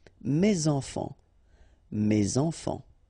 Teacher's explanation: Enfant, children is starting with a vowel, so you should make the liaison